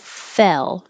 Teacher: the vowel is e as in head head so it's a little bit lower your jaw can be a little bit more open